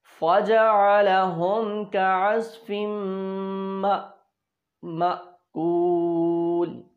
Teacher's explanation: ये मा की आवाज़ आ रही है, हम इसको झटके से पढ़ रहे हैं, ये हमज़ा साकिना कहलाता है।